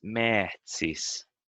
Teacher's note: The vowel is longer, and the consonant in the middle a little bit less stressed, and the I might also be longer, I think.